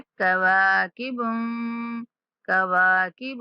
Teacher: واو کے بعد الف مد ہے تو واو کو کھینچنا ہے۔